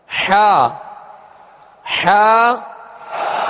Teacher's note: عین حا کا ایک ہی مخرج ہے، وہ وسط حلق یعنی حلق کا درمیانی حصہ